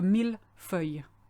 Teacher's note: Millefeuille is quite hard to pronounce because you've got 2 things to remember. You've got that ILL rule, as in feuille, which means you don't say le, you say ye. But you've got mille, which is an exception to the rule.